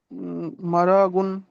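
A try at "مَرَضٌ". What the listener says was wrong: মার, টান হচ্ছে কেন? জলদি পড়তে হবে না? মারাজুন। হুম, তো একটু আগে ইজরা করলেন, রয়ের উপরে যাবার হারাকাত তাড়াতাড়ি পড়তে হবে।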